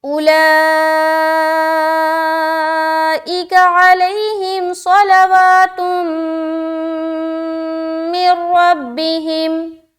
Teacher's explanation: ادغام تو کریں گے یعنی کہ ملائیں گے لیکن غنہ نہیں کریں گے، یعنی کہ رکاوٹ نہیں ہوگی۔ یہ ادغام کہلاتا ہے ادغام تام۔